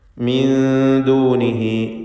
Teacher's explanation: ഈ പദത്തിൽ സക്കിനത്തായ നൂനിനെ ഇഖ്ഫാ ഹഖീഖി നൽകി മറച്ചു മണിക്കണം, അവ്യക്തമാക്കി മണിക്കുക